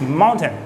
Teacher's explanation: there is the T there it's kind of stopped